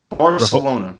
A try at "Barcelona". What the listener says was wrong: You're supposed to say Barcelona. It's with like a lisp.